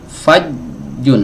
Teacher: Jadi, jim itu ee tempat keluarnya tengah lidah ditempelkan dengan langit-langit yang di atasnya · ini suaranya tertahan ketika tengah lidah ini menempel ke langit-langit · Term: huruf jim, syiddah